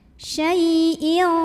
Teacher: Syai' ada huruf lin karena ada ya sukun sebelumnya fathah, maka dibunyikannya cukup dilembutkan.